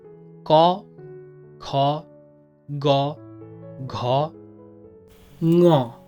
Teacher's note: Those are called valar, and that's called valar because whenever you're making this sound, your back of the tongue touches the soft palate